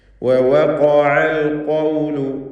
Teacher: രണ്ട് വാവ് തർക്കീഖ് ചെയ്യണം. ചുണ്ടിൽ നിന്ന് തന്നെ വാവ് ഉച്ചരിക്കണം. വൃത്താകൃതിയിലായിരിക്കണം വാവ് ഉച്ചരിക്കുമ്പോൾ ചുണ്ടുകൾ. ആവർത്തിച്ച് ഖാഫ് വരുന്നു.